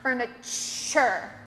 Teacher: Okay, now that's a tricky one too because there's no CH in it. That T-U-R at the end is a CH sound.